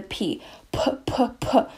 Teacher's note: there is a puff of air after the p p p if you put a piece of tissue in front of your mouth and say pat you'll see that it flies because you do puff air out · when we say pat there is a puff of air after the p p p if you put a piece of tissue in front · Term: aspiration